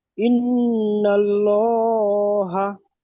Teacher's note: আল্লাহ শব্দের ডান দিকে যাবার এসেছে, তাই আল্লাহর লাম, লামকে পুর করে পড়তে হবে। পুর অর্থাৎ ল পড়তে হবে। · লামের উপর খাড়া জাবার এসছে, খাড়া জাবার আলিফ মাদ্দার সমতুল্য, সুতরাং খাড়া জাবারকে এক আলিফ পরিমাণ টান দিয়ে পড়বে। · হায়ের উপরে জাবার এসছে, জাবারটি হারাকাত, হারাকাতের পক্ষে তাড়াতাড়ি পড়বো, টান দেওয়া নিষেধ।